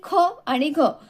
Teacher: उच्चार करताना जेव्हा तोंडामधून जास्त हवा बाहेर पडतो त्याला महाप्राण असे म्हणतात